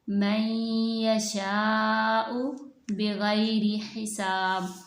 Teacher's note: नून को या में मुदगम कर देंगे, नाक के बांसे से गुन्ने के साथ ये अदा होगी। या नून साकिन के बाद अगर या आएगी तो वो गुन्ने के साथ अदा होगी।